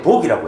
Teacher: 제주도 사람들은 오와 아의 중간 발음인 거지 아래아 발음으로 발음해가지고